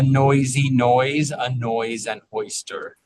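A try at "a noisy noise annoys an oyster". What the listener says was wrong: add is a little glottal strike on a noise and oyster so that we hear that those words clearly start without a consonant sound. They start with the vowel. So you add a little like extra puff of air, a glottal strike on those.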